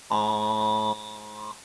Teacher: What you're doing is you're articulating the vowel normally, but you're lowering that velum in the back of your throat so that air can escape through the mouth and the nose simultaneously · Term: nasal